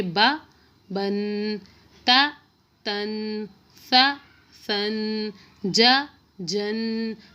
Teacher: تنوین والے حرف کو پڑھتے وقت آخر میں نون کی آواز آتی ہے، اس پہ غنہ بھی تھوڑا سا ہوگا اور اس میں نون کی آواز آئے گی، جیسا کہ یہ تختی آپ کے سامنے ہے۔